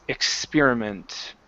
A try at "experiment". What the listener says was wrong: Yeah, give me that KS sound. X.